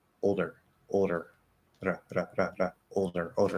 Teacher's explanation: there's a d in between well guess what we can flap that d right